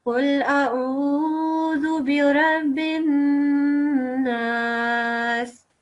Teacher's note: when they have a shadda, then you prolong that nasal sound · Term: noon mushaddad